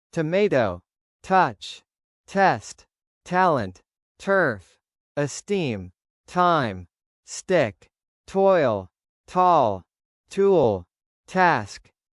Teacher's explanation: When T is at the beginning of a stressed syllable, it is pronounced clearly with a small puff of air called aspiration.